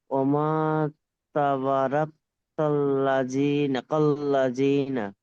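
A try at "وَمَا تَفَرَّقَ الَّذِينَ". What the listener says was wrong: ওয়ামা তাফাররাকাল্লাযীনা। তাবা নয়, তাফার, তাফার।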